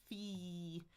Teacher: Then we've got that F which is teeth and lip f My tongue is in the front. I'm smiling.